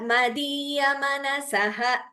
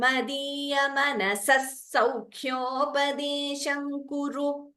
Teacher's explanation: If you're going to stop, that visarga should be heard clearly.